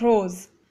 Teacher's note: when Place between two vowels s sounds like Z